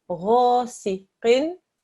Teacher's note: Make sure that the qaf also is thick